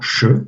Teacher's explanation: le S sourd était prononcé che